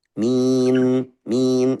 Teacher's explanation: Suara nun itu masih mengalir tapi langsung tutup bibir. Jadi mim.